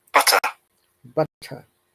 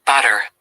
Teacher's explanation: in British English, in most of the cases, letter R is silent or it is replaced by the vowel sound or schwa sound, which is why we call British English as non-rhotic because we don't pronounce the R. · in British English, letter T, we pronounce a strong letter T, whereas in American English, letter T is pronounced as a flap T, that it sounds like D